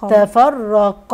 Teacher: واجي عند الراء الراء هنا مشدده مفخمه